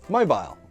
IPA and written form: məʊbaɪl (mobile)